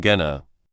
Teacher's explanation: The ing sound is gone and to becomes a quick to or even disappears into the flow.